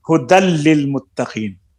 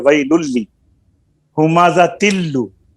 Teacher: लिल मुत्तकीन, आगे लाम आ गया है, यरमलून में लाम भी है, तो अब नून तनवीन को लाम में दाखिल कर देंगे, लाम के साथ में जम कर देंगे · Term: इदगाम